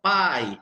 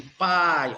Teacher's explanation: Primeiro a vogal, o som forte. Depois a semivogal, o som fraco, aquele som que você escuta. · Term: ditongo decrescente